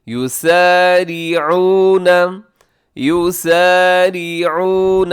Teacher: را باریک رکھیے گا، عین کا خاص خیال